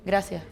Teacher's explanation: because I'm from the canari islands we usually miss the s's